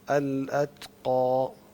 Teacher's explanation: تا میں یہ جو صفت ہوتی ہے ہمس کی، اس کا مطلب یہ ہوتا ہے کہ سانس جو ہے وہ جاری رہے گا، تو اس میں ہلکا سا جو ہے نا سانس کو جاری رکھتے ہیں.